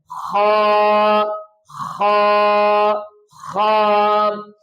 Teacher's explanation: خا کو پڑھنے کا یہ طریقہ ہے گلے کے سٹارٹ سے اور موٹا کر کے، اور 3 باتوں کا اور خیال رکھنا ہے کہ آپ نے ہونٹوں کو گول نہیں کرنا، آپ نے موٹا کر کے پڑھنا ہے، اور آپ نے آواز کو ناک میں نہیں لے کے جانا، اور گلے کے سٹارٹ سے پڑھنا ہے، خا خا خا۔